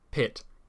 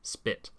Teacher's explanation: English speakers aspirate the labial stop P in the word Pitts but not in spit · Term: aspiration